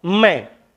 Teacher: मैं, नाक से भी ध्वनि आ रही है। मैं, ओष्ठ भी टकरा रहे हैं और नाक का भी प्रयोग कर रहे हैं · दोनों ओष्ठ भी टकरा रहे हैं और नाक से भी हवा आ रही है। मैं, नाक से भी ध्वनि आ रही है।